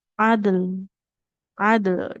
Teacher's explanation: Jadi dalnya memantul, lamnya tetap mengalir suaranya ya seperti itu. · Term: qalqalah